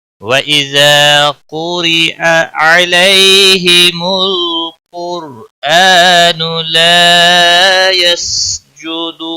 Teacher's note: را زیر کی وجہ سے باریک ہوگا